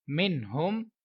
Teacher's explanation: نون ساکن کے بعد دوبارہ سے حروف حلقی کا ہا ہے، اظہار کا قاعدہ کریں گے اور غنہ نہیں کریں گے. میم نون زیر من، ہا میم پیش ہم، من ہم.